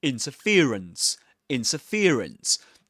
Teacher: So the main stress goes on fear. The syllable fear. And the secondary stress goes on the syllable in.